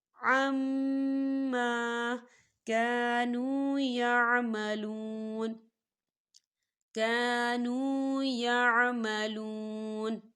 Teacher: یہاں پر الف مدہ ہو رہا ہے، تو ہم اسے دو حرکت کی برابر کھینچ کے پڑھیں گے